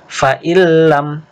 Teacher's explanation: nun sukun ketemu lam, idgham bila gunnah. Fa'illam, nunnya dileburkan ke lam.